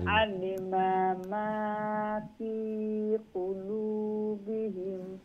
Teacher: জেরের পরে ইয়া সাকিন হইলে লঙ্গ হয়।